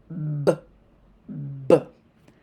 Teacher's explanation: The vocal cords are turned off and a big puff of air is pushed out. B is voiced. The vocal cords are turned on, and if you've noticed, it was a smaller puff of air that was pushed out.